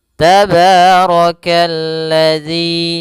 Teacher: kemudian rnya dibaca tebal karena dia Ro berharakat fathah